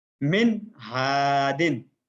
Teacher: ہا آ گیا نون ساکن کے بعد، الگ الگ جملے میں تھا پھر بھی اس کے باوجود ہم نے وہاں پر ظاہر کر کے پڑھا، یعنی غنہ نہیں کیا